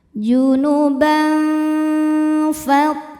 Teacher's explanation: Karena ada tanwin fathah yang menghadapi huruf fa. Maka bunyi tanwinnya samar-samar, siap-siap menuju makhraj huruf fa disertai bunyi dengung. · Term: ikhfa ausath